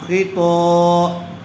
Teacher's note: زبر والے حرف کے بعد الف آیا ہوا ہے، اس لیے الف مدہ ہوگا، تھوڑا کھینچ کر پڑھیں گے